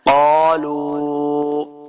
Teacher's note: زبر الف قا، دو نقطوں والا قاف ہمیشہ موٹا پڑھیں گے، قالوا واو مدہ ہے، اس کو دو حرکات لمع کرنا ہے